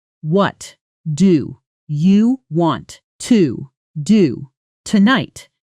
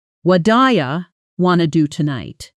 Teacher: Want to collapses into wanna. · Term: connected speech